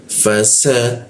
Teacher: Fa, lalu masuk ke sa. Sa, giginya dirapatkan, posisi lidahnya itu di belakang gigi bagian bawah dia.